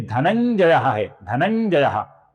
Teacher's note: ये दोनों उच्चारण गलत है दोस्तों। अपूर्ण म और अपूर्ण न, इन दोनों का इस अनुस्वार की जगह पर उच्चारण गलत है।